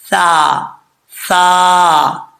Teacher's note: सा ठीक है इसका मखराज भी आपको बता देता हूं कि जुबान का सिरा ऊपर वाले दांतों के किनारे से लगे अंदरूनी किनारे से तो यह सा पढ़ जाता है · सा बारीक पढ़ा जाता है इसको मोटा पढ़ने की जरूरत नहीं है बगैर सीटी के पढ़ा जाएगा · سا بریک پڑھا جاتا ہے اس کو موٹا پڑھنے کی ضرورت نہیں ہے بغیر سیٹی کے پڑھا جائے گا